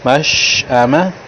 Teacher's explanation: شین کو اس انداز سے پڑھا ہے، اس کی آواز منہ کے اندر پھیل گئی ہے